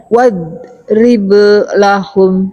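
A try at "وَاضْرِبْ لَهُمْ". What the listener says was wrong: Wadrib. Nah, berhenti sukunnya jangan terlalu lama. Jadi ada seakan-akan ada saktah lah ya. Kalau berhenti terlalu lama. Wadrib lahum.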